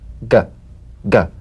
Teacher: You'll feel a crisp tap and a voiced pulsation of the back of the tongue. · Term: voiced tongue back plosive